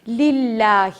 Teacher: جب بھی لام کے پیچھے اور لام کے اوپر زبر ہوگا اور جس لام پر جزم لگی ہو اس سے پہلے اگر زبر ہوگا تب تو اللہ کا لام موٹا پڑھیں گے, لیکن اگر اس کے پیچھے زیر لگی ہو تو ہمیں بالکل بھی اس لام کو موٹا نہیں کرنا ہے, بہت باریک پڑھنا ہے